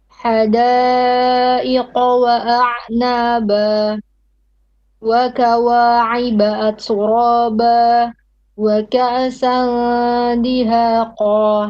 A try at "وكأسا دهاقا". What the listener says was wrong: وكأسا, not كأسا. Don't bounce the hamza.